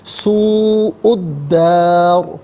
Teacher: جب وقف نہیں کریں گے تو را کو باریک پڑھیں گے کہ را کے نیچے زیر، جب وقف کریں گے تو را ساکن ہوگا، را کا ما قبل الف اس پر بھی کوئی حرکت نہیں، تو اس کا ما قبل دال ہے، اس پر زبر ہے، تو وقف کی صورت میں را ساکن کو پر کر کے پڑھیں گے